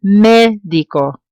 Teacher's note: It ends in an O, so I know it has to follow rule number one, but the stress falls on the beginning of the word. Médico. It needs an accent mark.